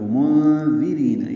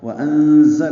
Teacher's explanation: یہ تیز صفیر کی آواز سے ادا ہوگا